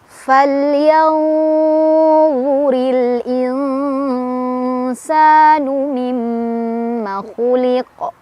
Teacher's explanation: Falyanzuril insanu mimma khuliq. Fal, lamnya lam mutlak ya, dibaca jelas, nggak boleh mantul. Falyanzu, yanzu ada ikhfa ausat karena ada nun sukun bertemu dengan huruf lo.